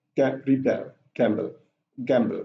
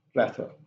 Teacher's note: it functions like a vowel because it directly occurs after a consonant